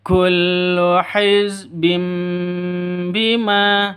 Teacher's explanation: Jadi tanwin bertemu dengan ba itu dengung iklab ya. Jadi mengganti sifatnya ba menjadi mim. Hizbim mingkem seperti itu, walaupun sifatnya ba itu sama dengan mim ya, sama-sama mingkem karena sama-sama huruf bibir ya.